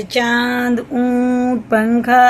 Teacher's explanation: نون کی آواز کو ناک میں لے جا کر ایک الف کے برابر چھپا کے پڑھنا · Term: غنہ اور اخفا